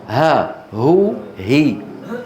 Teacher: أما الهاء هذه فالوتران يعني لا يكونان بعيدين جدا هكذا ولا يكونان ملتصقين